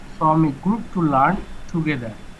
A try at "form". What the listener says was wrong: ফ্রম না, এটা হচ্ছে কি ফর্ম, FORM, ফর্ম, আর উচ্চারণটা আলাদা।